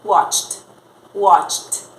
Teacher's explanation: O último som é ch, ch, ch. Não vibra.